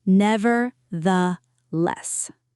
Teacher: There is also a th sound in the middle, the same soft th as in the and this.